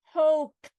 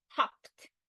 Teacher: in this word I'm retaining the long vowel because it derives from hope